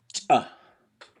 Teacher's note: you are actually turning your lungs off and you're making the sound with the air in your throat